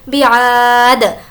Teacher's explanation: آ کو کھینچیں گے کیونکہ الف مدہ کا قاعدہ ہے اور وقف کرنا ہے تو دے زیر کو ہٹا دیں گے اور دال پر جزم دے دیں گے۔